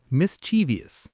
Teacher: My brain always wants to add an extra I in there, like mischievous, but it's just 3 syllables.